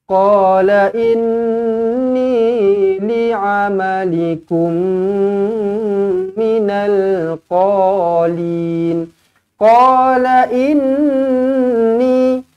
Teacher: dengungkan nun sabdu di sini wajibul gunnah. Kemudian ni dibaca dengan panjangnya 2 harakat ma asli.